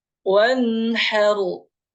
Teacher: Wanharu masuk ke hidung ya, karena guna tapi tidak panjang gunanya